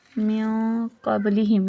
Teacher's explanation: نون ساکین کے بعد اخفا کے حرفوں میں سے کاف آیا ہے، تو من یعنی ناک میں گننا کریں گے